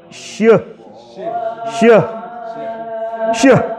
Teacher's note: Tadi kalau dicontohkan itu seperti ngusir kucing. Jadi ada bunyi bersamaan dengan tersebarnya angin kuat yang keluar dari dalam mulut. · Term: tafashshi